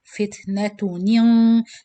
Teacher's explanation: So this is إخفاء with heavy gunna. So you do the gunna before you pronounce the qaf.